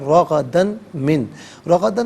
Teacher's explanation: رغدن میں را پر زبر، را کو پر کر کے پڑھیں گے، دال پر دو زبر کی تنوین، اسے میم کے ساتھ ملا کر میم کی آواز کو غننے کے ساتھ ادا کریں گے۔